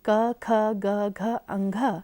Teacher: क वर्ग की पांचों ध्वनि क, ख, ग, घ, अंघ तथा ह एवं विसर्ग का उच्चारण कंठ से होता है, अतः ये ध्वनियाँ कंठ ध्वनियाँ कहलाती हैं।